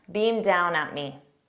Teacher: it's a very soft D and because down begins with a d i don't pronounce it because if I pronounce beam down together that D will be